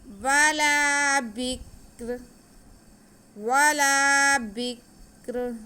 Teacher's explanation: آگے را پہ تنوین ہے لیکن ہم یہاں پہ وقف کریں گے تو را کو ساکن کریں گے تو را باریک پڑھا جائے گا. بہت احتیاط سے پڑھیں گے کیونکہ کاف اور را دونوں ساکن ہیں.